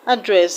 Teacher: Address, the first syllable is a schwa sound, so you do not stress a schwa sound. So the stress is not on the first syllable in option D.